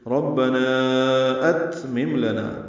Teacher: تا ساکن پہ ہمس ہے، ات تا باریک پڑھیں گے